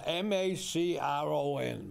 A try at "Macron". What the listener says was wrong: Yeah, but I don't think you pronounce the N. Macron.